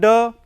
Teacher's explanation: It is voiced alveolar plosive.